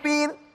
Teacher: ro diiringi oleh harokat kasroh, maka dibaca tarqiq, dibaca tipis